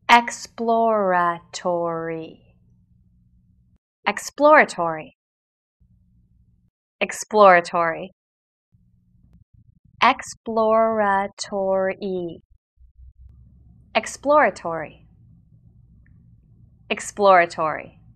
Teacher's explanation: it consists of a plosive p sound immediately followed by l and r sounds